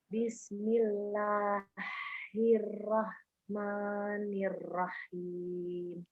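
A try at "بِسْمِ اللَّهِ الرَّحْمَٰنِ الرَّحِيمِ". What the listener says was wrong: Yang Ir-Rahmanir-Rahim sudah bagus. Yang bismillah itu H kecil. Bismillahi, biasa aja. Bismillahi, baru Rahmanir-Rahim gitu.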